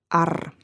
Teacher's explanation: you'll notice it's always rolled like a scottish r